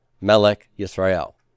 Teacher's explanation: they are so committed to first syllable stress that even in the construct state they retain their accent mark